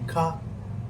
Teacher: I am not uh saying ca ca means I am stopping it in my throat.